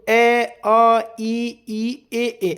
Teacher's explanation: जब आप इनको बोलेंगे तो खुद ही आपको लगेगा कि हमारे जो मुंह है वो अव्रत मुखी है इसमें। होंठ हमारे गोल हो ही नहीं रहे